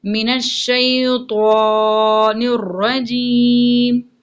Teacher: طوا کے اوپر آواز کو پر کرنا یعنی موٹا کر کے پڑھیں گے